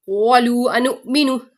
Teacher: یہاں پہ بھی واو مدہ کے بعد حمزہ دوسرے کلمے میں آ رہی ہے, مد منفصل